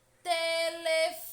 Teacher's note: Percebam que a sílaba que mais demora a ser pronunciada é fó. Telefone. Portanto, fó é uma sílaba tônica, é uma sílaba intensa, forte.